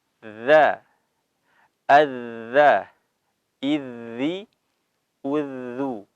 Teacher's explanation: huruf-huruf ujung lidah bertemu dengan ujung gigi seri atas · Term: huruf dzal